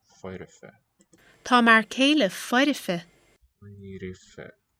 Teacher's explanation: there we have the epentasis of the vowel between liquid and fricative